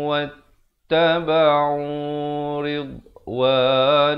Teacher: Idgham bi gunnah masuk beserta dengung 2 harakat. Asalnya hamzah tanwin di depan bunyi tapi bila datang waw dia jadi wattaba'u ridwanallah.